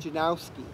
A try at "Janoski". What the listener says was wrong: Yeah, there's no W yet, Janoski.